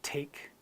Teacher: when I say the word take you can feel that puff of air